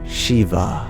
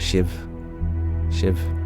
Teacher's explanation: The E sound becomes I, and the final A is dropped, so it becomes Shiv.